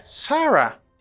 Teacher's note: it's a falling intonation because you lower your voice at the end